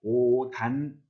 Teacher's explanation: 옷 시옷 받침은 어떻게? 예, 디귿으로 대표해서 오단 이렇게 발음을 해야 합니다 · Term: 음절 끝소리 규칙